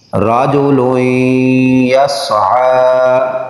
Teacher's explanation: حروف یرملون میں سے یا ہے نون تنوین کے بعد تو ادغام غنہ کے ساتھ